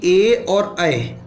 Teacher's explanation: ए और ऐ इनका उच्चारण स्थान होता है कंठ तालु